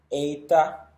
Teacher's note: es como un sonido de una E larga combinada con una I, eta. Luego tenemos zeta, su pronunciación es equivalente a la Z española, zeta.